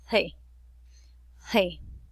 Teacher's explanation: Esos son los alvéolos. Entonces ellos utilizan la lengua y los alvéolos para mencionar la C y sonaría como más o menos C.